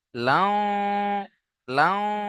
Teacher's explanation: তানবিনের পরে ইউ মিনের চারটি অক্ষরের মধ্যে ওয়াও এসছে, তাই না? তানবিনকে ওয়াও এর সাথে মিলিয়ে একালিপ গণনা সহ পড়তে হবে